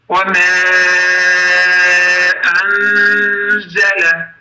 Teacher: burada z hərfi bizim Azərbaycan z hərfisidir. Belə səslənilir, yəni ki, burada pərtəz z deyildir.